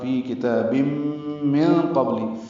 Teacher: نون ساکن کے بعد قاف آنے کی وجہ سے اخفا ہے، نون کی آواز چھپائیں گے، قاف پر پڑھیں گے، با ساکن پہ قلقلہ ہے۔ · کتاب میں کاف باریک تا پر کھڑا زبر ہونے کی وجہ سے یہ 2 حرکات لمبا کریں گے۔ تنوین کے بعد میم آنے کی وجہ سے ادغام ناقص ہوگا، غنہ ہوگا، فی کتاب من قبل۔